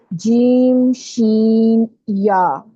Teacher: اگر آپ غور کریں گے نا پکچر کو دیکھ کے اپنی زبان پہ کہ آپ کی زبان کہاں لگ رہی ہے، تو آپ کو آئیڈیا ہوگا کہ زبان کا درمیانہ حصہ اوپر تالو کو لگ رہا ہے، سخت تالو کو